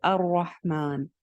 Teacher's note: را یہاں پہ موٹی ہے کیونکہ را پہ زبر ہے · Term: را موٹی